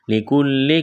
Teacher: سے پہلے زبر، یا لین بغیر کھینچ کے پڑھنا ہے، لِكُلِّ، کاف کو باریک کرنا ہے، لام کے ساتھ ملانا ہے ، لام کو جلدی پڑھیں گے، سختی کریں گے لام میں،